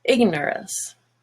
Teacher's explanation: now nor is no longer orange, it's just ner.